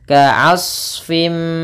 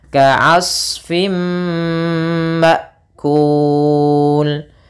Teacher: Sering terjadi kesalahan di sini memantulkan shadnya. Shad ini sama seperti huruf dhad, tidak boleh mantul.